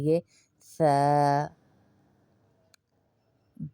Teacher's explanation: लगेगी ऊपर के त त स दांतों की टिप को देखिए जबान की टिप को दांतों के अंदर लाएंगे